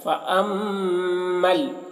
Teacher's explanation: میم مشدد ہے تو غنہ کر رہے ہیں، غنہ کر کے پھر میم کو لام کے ساتھ ملا رہے ہیں. فأمل، اس طرح.